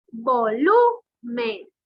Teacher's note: Esto lleva mayor fuerza de voz en lu, es grave.